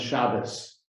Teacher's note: The pronunciation is slightly different in Yiddish. You often emphasize a different syllable, and a T at the end often becomes an S.